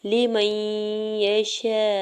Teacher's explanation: میم کے زبر کو یا مشدد کے ساتھ ملاتے ہوئے پڑھیں گے۔ یہاں پہ نون ساکن جو ہے وہ نہیں پڑھا جائے گا، ٹھیک ہے۔ جب بھی ساکن اور مشدد حرف ایک ساتھ آتے ہیں تو ساکن حرف کو سکپ کر دیتے ہیں اور متحرک حرف کو مشدد حرف کے ساتھ ملاتے ہوئے پڑھا جاتا ہے، ٹھیک ہے۔ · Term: ادغام مع غنہ